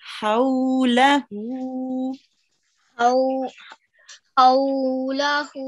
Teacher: Just the vowel lean here, we have to prolong it for a tiny bit longer